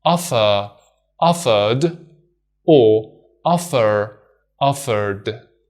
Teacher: regardless of whether you pronounce the R or not, there's no difference in ed as d